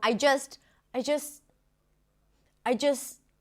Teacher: She's not pronouncing the T in the word just.